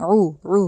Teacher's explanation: دوسرا عین جو ہے اس کو حلق سے نکالنا ہے، اتوی نہیں کہنا، الف کی ساؤنڈ نہیں دینی عین کو، اتوی نہیں، عو، ٹھیک ہے، عین پیش عو، عدو، हुआ, आइन पे हलक से निकलेगा एक तो आइन, दूसरी बात वाव दोजे म्यूं पे गुन्ना करना है।